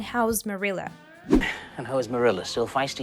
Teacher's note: you hear the word house in his question well that's because how is is said with a connected speech here and it really sounds like the word house just with the z sound